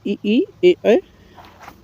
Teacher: अग्र स्वर में यानी जीवा के जो अग्र भाग से उच्चारित होना होता है वही अग्र स्वर होता है